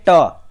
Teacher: ट बोलेंगे तो आपका जो जीभ है तालू में सटेगा। तो इस तरीके से आप इसको मूर्धा उच्चारण विवर्ग भी एक तरीके से आता है, ठीक है।